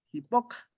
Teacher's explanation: Y aquí ella no pronuncia la labializada, la W.